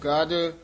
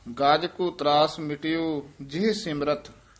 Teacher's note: ਗਜ ਪੋਲਾ ਹੀ ਬੋਲਣਾ ਹੈ, ਹਾਥੀ ਦਾ ਵਾਚਕ ਹੈ, ਗੱਜ ਨਹੀਂ ਕਹਿਣਾ ਹੈ।